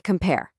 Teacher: That little punch on the second part, that's the stress.